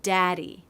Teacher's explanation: It sounds like daddy. No stop in the airflow. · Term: D between vowels